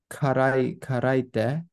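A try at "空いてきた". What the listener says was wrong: It is pronounced as kara when it means empty, and it does mean empty here, but as a verb, it's actually su from suku.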